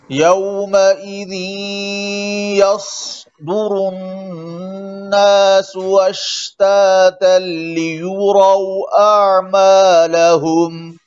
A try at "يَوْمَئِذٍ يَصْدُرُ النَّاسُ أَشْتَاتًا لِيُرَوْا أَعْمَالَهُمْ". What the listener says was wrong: अश्तातन का हमजा भी साफ पड़े यौमइज़ यस्दुरुन नासु से